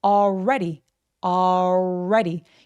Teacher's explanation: L 발음 없다라고 생각해 주시고 already 발음하시면 됩니다.